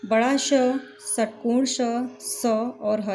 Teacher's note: जब हम इनका उच्चारण करते हैं तो हम महसूस करेंगे कि हवा गर्म निकल रही है और घर्षण करते हुए निकल रही है। इन्हें संघर्षी व्यंजन भी कहते हैं। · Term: ऊष्म व्यंजन